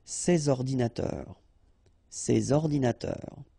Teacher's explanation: you should make the liaison between S and O